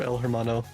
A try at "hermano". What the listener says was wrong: It's pronounced Hermano, buddy. The H is silent.